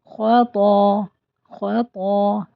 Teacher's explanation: خو کو ہم خوب منہ بھر کے پڑھیں گے، موٹا کر کے۔ · کو ہم خوب منہ بھر کے پڑھیں گے، موٹا کر کے۔ طا کے ساتھ الف مدہ بھی ہے اس لیے اس کو اسٹریچ کریں گے اور یہ اور زیادہ ہیوی ہو جائے گا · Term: ہیوی حرف